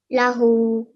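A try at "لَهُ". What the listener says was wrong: Okay, remember to stretch this for 2 seconds. Try again.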